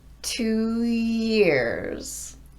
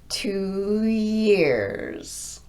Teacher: I'm gliding from an ooh to the Y sound with no break in my voicing.